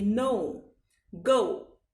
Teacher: English का ओ होता है, हल्का सा उ का उच्चारण इसमें आगे आ जाएगा